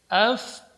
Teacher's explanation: Ja ketika berhenti tidak boleh tertahan suaranya.